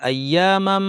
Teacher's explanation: গলার মাঝখান থেকে আইনটাকে আমাদের শক্ত করে বলতে হবে।